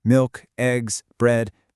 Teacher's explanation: when we're listing things, we kind of keep it flat and steady until the end. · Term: intonation